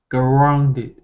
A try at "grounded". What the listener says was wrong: Oh, almost. We lost the R. So it's grounded.